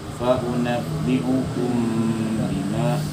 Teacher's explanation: Nah, ada dengung situ karena ketemu ba. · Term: ikhfa syafawi